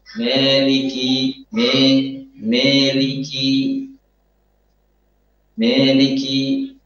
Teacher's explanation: Mencampur suara alif dengan suara ya. Sehingga yang terdengar adalah alif yang imalah.